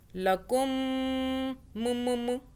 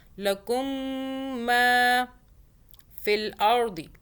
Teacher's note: میم مشدد ہے، میم پہ ہم غنہ کریں گے، یعنی کہ اس کے اوپر دیکھیں تشدید ہے، تو میم اور نون پہ تشدید ہوگی تو دونوں پہ 2 سیکنڈ کا غنہ کیا جاتا ہے۔ میم پہ ایسے کریں گے کہ میم کو ہم ہونٹوں سے دبا لیں گے 2 سیکنڈ کے لیے